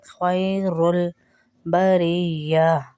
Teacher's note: خیر را کو لام سے ملائیں گے.